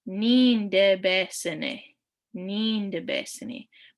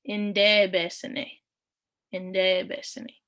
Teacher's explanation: you might hear some dialects where they don't pronounce the N